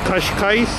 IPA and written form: kɐʃˈkajʃ (Cascais)